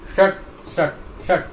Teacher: हमारी जो जीवा है पलटी हुई है, तो इस मूर्धन्य सकार का उच्चारण बिल्कुल सही होगा।